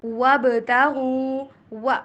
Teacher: واو کے اوپر ہونٹوں کو گول کرنا ہے، وی والی ساؤنڈ نہیں بلکہ ڈبلیو والی ساؤنڈ